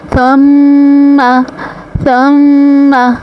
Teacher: غنہ کی ادائیگی ایک الف کے برابر ہوگی، ایک الف کے برابر ہم آواز کو ناک میں روکیں گے۔